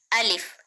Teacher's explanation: यह जल्दी अदा होता है। बगैर खींचे अलिफ को पढ़ना है।